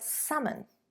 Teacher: it is a silent L. We don't pronounce the L in English.